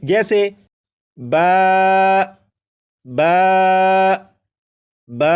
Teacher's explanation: با کو 1 الف کے برابر کھینچ کر پڑھیں گے